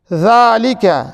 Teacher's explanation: پہلے کھڑا زبر ہے اور اسے 1 الف یا 2 حرکت کے برابر کھینچ کر پڑھیں گے